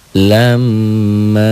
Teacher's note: M-nya ditahan, M-nya ditahan, A-nya juga ditahan. Karena kebetulan setelah huruf gunnah ada mad tobi'inya, ini mad double.